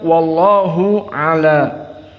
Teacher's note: lafdzul jalalah Allah mufakhamah karena sebelumnya fathah